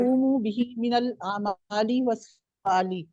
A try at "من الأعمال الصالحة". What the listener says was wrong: یہ آمن الاعمال والصالح ہے، دوبارہ دھیان سے پڑھیں، شاباش، واو نہیں ہے نا بیچ میں، تو باقی اب ٹھیک پڑھ لیا آپ نے، بارک اللہ فیکی، گڈ۔ اچھا حمیرہ طاہر آگے آپ پڑھیے، مزید ابھی ہاتھ نہیں کھڑے ہوئے کسی کے، اور جنہوں نے دوبارہ پڑھنا ہے ذرا ہاتھ کھڑے کر